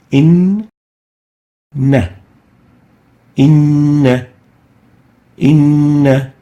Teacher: The noon here has a shadda, and that's basically 2 noons, noonun with sukoon, inna, inna, inna, so it's given Ghunnah for 2 units